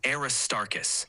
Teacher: the stress is on the second syllable tar